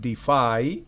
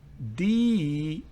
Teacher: La pronunciación defy y esta es defy. En la primera el acento está en la segunda sílaba fonética. En la segunda palabra el acento está en la primera sílaba fonética.